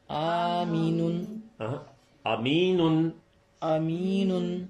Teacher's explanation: پہلی الف معروف کی آدھی آواز ہے، دوسری یا معروف کی پوری آواز ہے، اور آخری نون میں تنوین ہے.